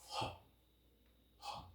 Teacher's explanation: this is a glottal sound